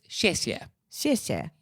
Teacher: sort of a falling tone on these words